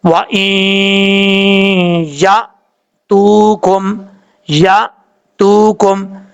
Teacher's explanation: حمزہ ساکن جو ہے وہ جھٹکے سے پڑھا جاتا ہے. ساکن سے مراد یعنی حمزہ کے اوپر جزم ہو تو یہ جھٹکے سے پڑھا جاتا ہے.